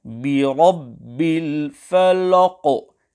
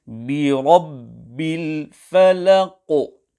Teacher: The correct pronunciation is Birabbil falaq, where the lam is not pronounced full mouth